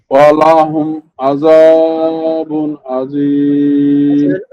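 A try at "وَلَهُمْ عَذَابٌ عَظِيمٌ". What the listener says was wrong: ওয়ালাহুম টান হয়ে গেল, ওয়ালা টান হবে না, ওয়ালাহুম আযাবুন আযীম।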